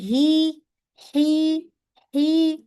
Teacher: منہ اور حلق کا جو خالی حصہ ہے، الجوف، وہاں سے ادا ہو رہا ہے